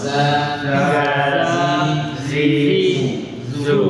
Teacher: Kemudian istifal, pangkal lidah turun, ya, menunjukkan huruf zaid tipis.